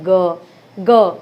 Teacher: गले में स्वर तंत्री में ग एक झनकार जैसी उत्पन्न हो रही है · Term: सघोष